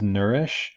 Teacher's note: for er we know that the third formant is really low